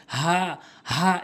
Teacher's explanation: হালকের শুরু থেকে হা এভাবে উচ্চারণ করতে হবে